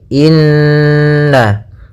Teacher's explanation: Maka cara membacanya adalah kita tahan dulu ghunahnya inna baru kita baca na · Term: gunnah